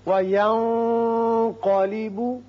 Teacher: نون پر اخفا کیجئے اور قاف پر پڑھیے